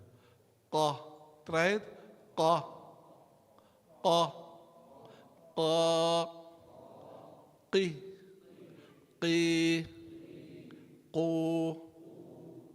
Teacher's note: the makhraj of a qaf is the back of the tongue against the soft palate.